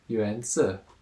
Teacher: So it's the second tone, Yuan, and third tone, Si. So down, up